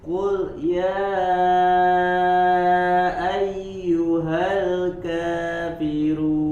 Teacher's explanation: Jangan ada jeda ya dari huruf qul ke ya karena di situ tidak ada tidak ada sakta.